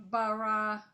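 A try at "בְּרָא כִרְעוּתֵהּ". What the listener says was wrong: Not ba. This is one dot. raw. It's a blend. Beer.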